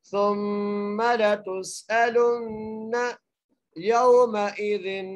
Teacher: اگلی آیت آخری آیت پڑھتے ہیں جی، سا کو میم سے ملاتے ہوئے غنہ کریں گے، ثم لتسألن، تا کو سین سے ملانا ہے، سیٹی کے ساتھ پڑھنا ہے سین کو، آگے حمزہ ہے، حمزہ کو بغیر کھینچے پڑھنا ہے، لام کو نون سے ملاتے ہوئے غنہ کرنا ہے.